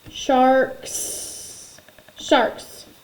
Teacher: Unvoiced. So if my K is unvoiced, my S is unvoiced.